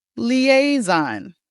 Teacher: make sure when you say this sound, you say the z and not the s.